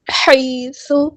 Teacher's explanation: یا ساکن سے پہلے زبر ہے، مدلین ہو رہی ہے، نرمی سے موڑیں گے، اور ہا کو وسطی حلق یعنی مڈل تھروٹ سے ادا کریں گے، حیث نہیں، اور نہ ہی یہ لفظ ہے حیث، بلکہ ہم اسے پڑھیں گے حیث۔ · حیث، یا ساکن سے پہلے زبر ہے، مدلین ہو رہی ہے، نرمی سے موڑیں گے، اور ہا کو وسطی حلق یعنی مڈل تھروٹ سے ادا کریں گے